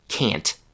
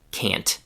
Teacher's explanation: you can clearly hear the short vowel a. The same sound that you hear in cat or fast. And you can also clearly hear the t sound at the end of the word. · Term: classic book form